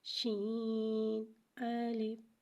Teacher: شین میں تفشی والی سیٹی کو ظاہر کریں گے۔ شین کو ایک الف یعنی 3 مقدار کھینچ کے پڑھیں گے، جبکہ الف کو بغیر کھینچے پڑھیں گے، شین الف۔